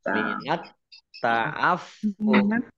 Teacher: fa-nya dibaca sukun karena wakof dan dibaca pendek karena tidak ada tanda panjangnya